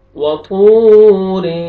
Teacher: वतूर थौ पढ़ेंगे, थौ को मोटा करके, वाव मद है, वाव जज़म से पहले पेश है, थौ को आपने खींचना है। रॉ को बारीक पढ़ेंगे, रॉ के नीचे ज़ेर है।